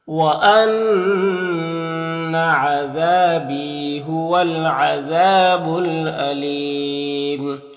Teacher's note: میں تو لام کو پڑھیں گے، الف کو نہیں پڑھیں گے، یہاں پر وقف کریں گے تو مد عارض وقفی ہوگا